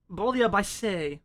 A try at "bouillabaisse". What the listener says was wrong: bouillabaisse because you don't pronounce the S.